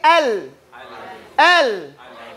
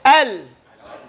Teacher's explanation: Lam is pronounced on the edge of the tongue. When it goes up, inner up, it hides on the gums, very light.